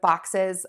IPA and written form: bɔksɪz (BOXES)